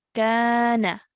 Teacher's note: this is an alif mud because the letter before carries a fatha. So we've stretched for 2 counts over here.